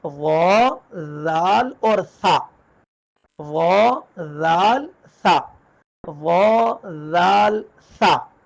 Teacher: اس میں زا یہ آواز بالکل نہیں آئے گی، ثا کو ادا کرتے ہوئے سین کی آواز بالکل نہیں آئے گی